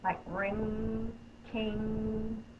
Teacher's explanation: My tongue is up in the back, the sound is coming through my nose.